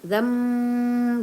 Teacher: jadi iqlab dia harus dengung ya, berubah menjadi mim gitu.